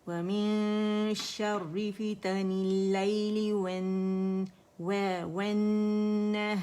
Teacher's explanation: زبان کی جڑ درمیانی حصہ اوپر جائے گا شین کے لیے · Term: شین کا مخرج